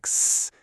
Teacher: For sounds without pitch, like s, it's more of a noisy hiss.